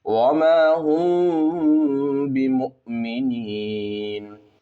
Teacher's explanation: اب یہاں پر میم ساکن ہے، میم ساکن کے بعد با ہے تو اخفاء شفوی ہوگا، غنہ اور اخفاء کے ساتھ پڑھیں گے